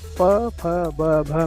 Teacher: हमारी दोनों ओठ जो होते हैं वो आपस में सटते हैं, तभी इनका उच्चारण होता है।